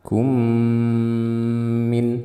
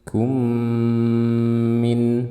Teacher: Kum, di sini ada mim mati bertemu dengan mim. Hukumnya disebut idgham mimi, dibaca dengan gunnah yang panjang.